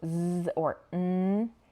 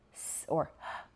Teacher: So z or n have a vibration in your throat, while sounds like s or h do not. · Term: voiced versus unvoiced sounds